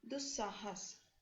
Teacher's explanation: ये जो स है इसके कारण से ये विसर्ग भी स में परिवर्तित हो गया